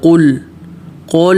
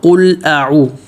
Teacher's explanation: قل بولتے وقت قاف موٹا اور لام واضح، قول نہیں، اکثر لوگ قول کرتے ہیں، قول اعوذ، قول نہیں، قل اور لام کو ہلانا نہیں، قول اعوذ، قولو نہ ہو، قل اعو اور اعو بالکل واضح، ذو اعوذ، قل اعوذ۔